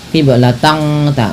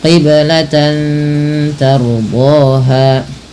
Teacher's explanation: Ra apabila didahului dengan huruf fathah maka dibaca dengan ra tafkhim, ra yang dibaca dengan tebal